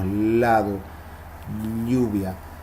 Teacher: como una especie de silbido hay otras que se llaman laterales la ele y la ll y el aire sale por los lados